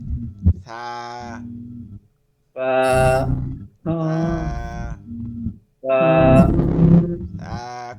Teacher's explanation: কোনো শব্দ আসবে না, বাতাস বের হবে, শব্দ আসবে না।